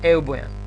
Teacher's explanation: спиритусот е ленис, не е аспер и затоа не читаме, не му даваме вредност Х, туку еубојан.